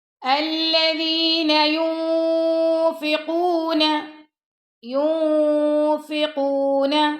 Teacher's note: Next پڑھتے ہیں، الذین ينفقون، اب ينفقون پہ ہم نے کیا کرنا ہے؟ اخفا کرنا ہے، ٹھیک ہے، کیونکہ نون ساکن کے بعد یہاں پہ فا آ رہا ہے